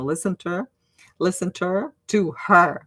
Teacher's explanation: nobody says the H nobody pronounces the H there in English